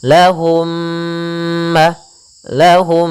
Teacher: Mir mim ya yang satu mim sukun yang satu mim berharakat maka caranya adalah masukkan mim yang pertama kepada mim yang kedua kemudian ditahan gunahnya